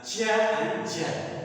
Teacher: एफ्रिकेटिव sound है, जो friction तो होता है लेकिन ग्लाइड करता है